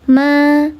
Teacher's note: Alif sebelumnya harakatnya fathah, dibaca panjang 2 harakat. Nama hukumnya mad tabi'i zahir karena alifnya nampak.